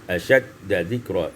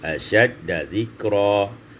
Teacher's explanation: Contohnya adalah asyadda dzikra, antara dal dengan zal, dekat makhrajnya, sama-sama di ujung lidah, tapi karena dal ini bertasydid, maka tidak bisa dia diidghamkan, harus baca dengan izhar dalam riwayat Imam As-Susi, asyadda dzikra.